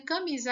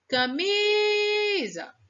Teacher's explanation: Qual foi a sílaba que a gente mais esticou o som foi o mi então o mi é a sílaba tônica